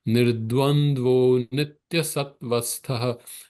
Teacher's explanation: That nirdvandva becomes nirdvandvo. The visarga becomes O sound, but at the end of the pada, the visarga remains as it is.